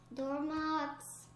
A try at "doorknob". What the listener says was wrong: Doormobs? What's a doormob? A doorknob. Because you said doormob.